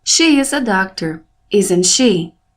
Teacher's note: A última palavra, she, é o som mais forte da minha pergunta. É quando eu elevo a minha voz. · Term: rising intonation